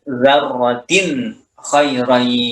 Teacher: dzarratin di sini tanwin itu bertemu dengan kha, itu harus jelas bunyinya tanpa ada gunnah sedikit pun dan tanpa ada yang dimasukin bagian bacaan tanwin kepada huruf setelahnya, itu kha di sini. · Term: Huruf izhar